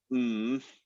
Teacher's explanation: make the sound um i could write it like this and that would be humming just making the sound m without any vowels